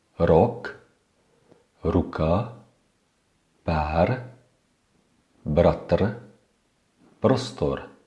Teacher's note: The Czech R is pronounced similarly to the Spanish or the Russian R. You can feel the vibration of your tongue when pronouncing this letter.